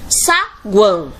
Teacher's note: vemos que o A se destaca entre essas 3 vogais. Então, o U e o O estão com menos tonicidade, estão mais fracas. Então, aqui nós vamos ter primeiro uma semivogal, depois uma vogal e outra semivogal. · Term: tritongo